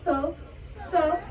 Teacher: स टच कर रही है ना दांतों को, तो ये है हमारा दंती